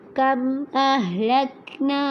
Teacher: کم میں میم ساکن کے بعد حمزہ آ جائے تو یہاں پر اظہار شفوی ہوگا. یہاں پر نہ ہی غنہ ہوگا نہ ہی اخفا ہوگا